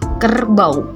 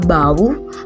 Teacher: Selanjutnya, diftong au atau au pada kata kerbau, di mana pada suku kata bau, vokal a dan vokal u tidak dapat dipisahkan menjadi bau.